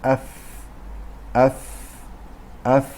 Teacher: که که که لب‌ها سه مخرج دارن یکی یعنی جهت یا سمت داخلی لب پایین همراه نوک دندانهای پیش بالا که مخرج فا میباشد